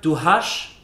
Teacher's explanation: So the S sound becomes a sh sound.